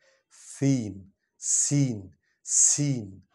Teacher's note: سین سیٹی کی آواز نکلتی ہے. سین یہ زبان کی نوک جو ہے اگلے دانتوں کے ساتھ آگے لگتی ہے.